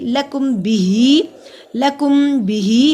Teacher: हा खड़ी ज़ेर एक अलिफ के बराबर लंबा होगा